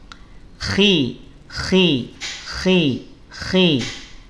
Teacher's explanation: saat harakat dia tetap tebal ya dia tetap terangkat pangkal lidahnya tetapi karena kasrah ketebalannya dia berkurang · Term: tafim nisbi